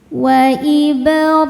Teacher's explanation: Wa ibrahimal hi hukumnya mad thobii zohiri karena ada ya sukun sebelumnya kasrah. Cara bacanya panjang dua harakat.